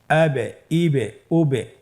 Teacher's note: যেমন হামজা বা জবর আবে, হামজা বা জের ইবে, হামজা বা পেশ উবে, আবে ইবে উবে। এই যে আমরা হরফের শেষের দিকে একটা সাউন্ড করছি, এটা একটা প্রতিধ্বনি হচ্ছে, একটা ডাবল সাউন্ড হচ্ছে, এটাই কলকলা। উচ্চারণের সময় একটু ধাক্কা দিয়ে উচ্চারণ করলেই কলকলা হয়ে যাবে ইনশাআল্লাহ।